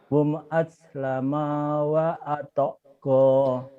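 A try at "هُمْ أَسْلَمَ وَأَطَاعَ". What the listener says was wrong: Yang panjang cuman ujung doang loh Pak. Ini doang yang panjang.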